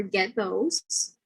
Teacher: this T becomes dental plosive before a dental consonant